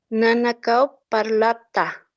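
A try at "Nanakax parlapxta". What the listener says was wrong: La pronunciación PX, eso no se nota muy bien, ¿ya? Entonces, tienes que pronunciar esto muy bien. PX, ¿no ve? Entonces, la X tiene su sonido, ¿no ve? Ahora aquí no hay vocal, aparentemente eso tal vez se dificulta, ¿no? Entonces, solamente hacen su sonido, PX, ¿no?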